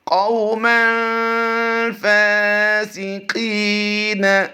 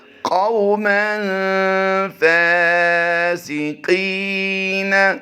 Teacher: قاف واو زبر قو میں لمبا نہیں کریں گے، واولین کا قاعدہ ہوتا ہے